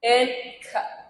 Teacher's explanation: voiceless consonants that are produced without any vocal cord vibration, such as h and k.